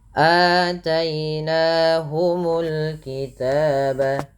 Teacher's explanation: Dan pada lafal ataina di sini ada hamzah berharakat fathah bertemu dengan huruf mad berupa alif. Panjangnya sendiri untuk mad badal adalah 2 harakat